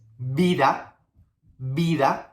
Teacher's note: The last sound we're going to be working with is B and V, okay? They are pronounced in the same way, with the B sound.